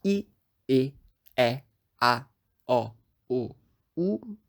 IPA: i e ɛ a ɔ o u